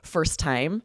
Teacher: when there are two T's together like that, you do not pronounce them both.